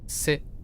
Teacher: Both Cantonese and Fujianese stop on it, so it just like stops, a glottal stop, like sit, like ne sigma yeah, right?